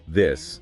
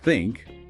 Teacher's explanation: the difference between this voiced and think voiceless, and how it's often a new mouth movement.